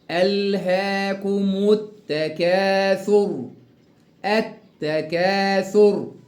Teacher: كلمة التكاثر اللام شمسية اللي بعدها التاء مشددة